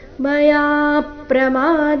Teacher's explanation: ಮಯಾ ಯ ದೀರ್ಘ ಹೇಳಿ ಯ ಮೇಲೆ ಪದ್ವಾಘಾತ